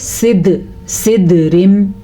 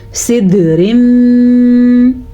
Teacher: سب سے پہلے تو ہم نے دال پہ جھٹکے کی کیفیت پیدا کی، یعنی کہ ہم نے جھٹکا دیا دال پہ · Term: قلقلہ